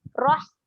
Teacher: Tadi pun saya dah fokuskan huruf ha kena keluar, dia kena tekan sedikit dekat tengah kerongkong dan lagi satu dia kena keluar angin